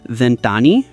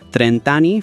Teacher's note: for all the other decades from 20 up to 90, the last vowel gets dropped before ani. So, you get this really cool rhythmic sound.